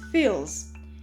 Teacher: We pronounce the ending s with the sound of z because the sound of l is voiced.